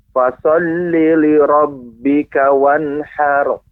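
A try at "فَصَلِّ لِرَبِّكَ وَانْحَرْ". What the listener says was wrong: Ya, har. Ini Bapak jangan sampai dinampakkan wanharo. Enggak, ini itu mungkin karena terdengar dengan mix sehingga seolah seperti wanharo ya. Akan tetapi itu hanya sekedar pantulan wanhar.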